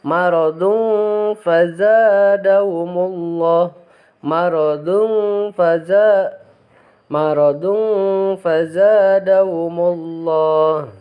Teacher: Jadi membacanya harus didengungkan, asalnya dun jadi dung. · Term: ikhfa